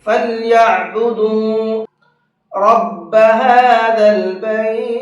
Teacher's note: اس کو کھینچ کر کے اس لیے پڑھتے ہیں، اس لیے کہ حروف لین کے بعد میں جزم آ رہا ہے، اس کنڈیشن میں بھی 4 سے 5 الف کے برابر کھینچ کر کے پڑھتے ہیں۔